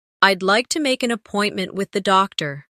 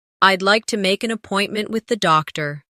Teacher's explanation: Keep the stress on appointment so the listener understands the purpose.